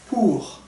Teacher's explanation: この▁R▁は、聞こえない。